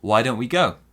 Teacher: we stress why why don't we go and we stress the verb at the end